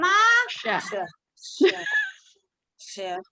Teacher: Jadi menempel tengah lidah ke langit-langit mulut.